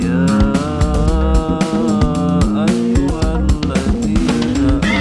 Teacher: Lafal ya ayyuhalladzina adalah mad jaiz munfasil karena ya dibaca panjang 3-5 harokat.